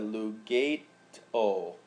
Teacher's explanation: where we have lug gate o the E Blends in with the O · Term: elision